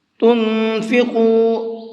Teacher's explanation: تنفقوا، نون کے اندر اخفا کریں گے، یعنی کہ آواز کو ناک میں چھپا کر کے پڑھیں گے، اور قاف کو منہ بھر کے پڑھیں گے